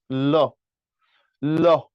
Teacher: তুমি যখন ল উচ্চারণ করো ল তখন খেয়াল করে দেখো আমি একটু বলি দেখো ল ল তোমার মুখের যে বাতাস এটা যে দুপাশ দিয়ে বেরিয়ে যাচ্ছে ল সামনের দিকটা ব্লক এপাশ দিয়ে বাতাস বেরিয়ে যায় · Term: পার্ষিক ধ্বনি